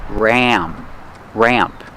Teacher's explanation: Pronunciation, use the short A sound like black cat, ramp. The A sound changes a little before the M. It goes more nasal in your nose.